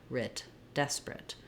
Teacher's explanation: But because the des syllable is stressed, that's where my clear vowel is, and now my A is more of a reduced I sound